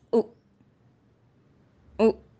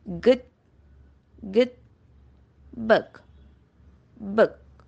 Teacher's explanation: It is close mid and close back rounded vowel.